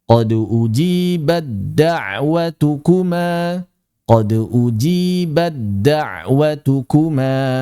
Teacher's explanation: Sehingga dalam praktiknya cara membacanya ini huruf ta tidak dibaca sama sekali. Ketika wasal dia hilang, lebur hilang 100%. Kita langsung baca qod ujibadwatukuma qod ujibadwatukuma begitu. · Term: idghamut tai fidali, idgham